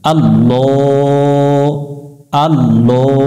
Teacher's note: আল্লাহ শব্দের ডাইনে জবর হলে আল্লাহ শব্দের লামকে মোটা করে পড়তে হবে। এটা জবরে আকার পড়া যাবে না, অর্থাৎ লাম জবর ল পড়তে হবে, লা পড়া যাবে না।